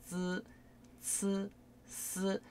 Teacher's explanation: 쯔츠스 할 때는 이 앞니와 입천장이 이어지는 부분 있죠. 거기다 혓바닥을 치시는 거예요.